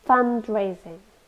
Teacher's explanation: It's a noun. Three syllables. We stress the first one.